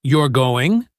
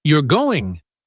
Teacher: the question you're going typically has a rising intonation at the end, whereas the statement you're going has a falling intonation